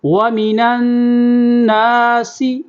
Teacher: سین کی سیٹی کی آواز نکالیں گے